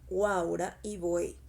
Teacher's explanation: una vocal cerrada más una vocal abierta más vocal cerrada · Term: triptongo